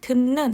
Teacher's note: 했을 때 듣는 듣는에 원래 디귿이 무엇이 아니었는데 무엇으로 바뀌었죠 네 비음이 아니었는데 비음으로 바뀌었죠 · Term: 비음 동화